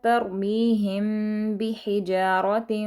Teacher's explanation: میم ساکن کے بعد با آ رہا ہے تو ہم نے یہاں پر بھی میم پر ہم نے تھوڑا سا رکے ہیں، ہم نے اخفا کیا ہے